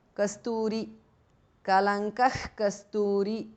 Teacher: Visarga changes to jihvamuliya.